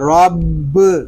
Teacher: با مشدد ہے، اس کو جماؤ کے ساتھ ادا کریں گے